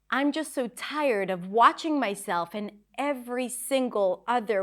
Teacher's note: So sometimes when we want to emphasize something, we just separate the words. We don't use regular connected speech and every word is somewhat stressed.